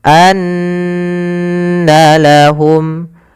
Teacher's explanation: Kemudian anna lahum, ada nun berharakat tasydid. Apabila ada nun tasydid itu hukum bacaannya gunnah, yaitu kita tahan suara nunnya